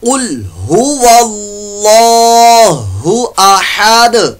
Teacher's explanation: कुल यहां पर लाम साकिन में कलकला नहीं करना, कौफ रुफ़े मुस्तालिया में से है, पुर मोटा पड़ जाएगा।